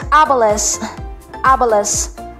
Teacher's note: Ang stress po ay nasa first syllable.